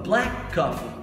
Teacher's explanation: Aí eu tenho a segunda palavra que é coffee, beleza? Então você tem esse som do k no final e o som do k no começo.